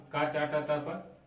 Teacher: पहले जो शुरू होता है कंठ से, फिर तालु से, फिर मूर्धा से, फिर दंत से, फिर ओष्ठ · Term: उच्चारण स्थान